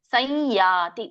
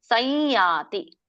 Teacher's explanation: ಸಂಯಾತಿ ಆದ್ರೆ ಯ ಮೂಗಿನಿಂದ ಬರುತ್ತೆ